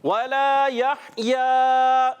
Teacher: لام الف زبر لا ایک الف کھینچ کر ادا کریں گے۔ یحییٰ میں ہا کی ادائیگی کلیئر رکھنی ہے حلق کے درمیان والے حصے سے، ہا حلق کے درمیان والے حصے سے اور ہا حلق کے نیچے والے حصے سے، تو اس کو کلیئر ادا کریں گے، ہا اور ہا سے نہیں بدلنا چاہیے۔